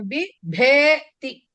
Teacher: first అల్పప్రాణము తర్వాత మహాప్రాణం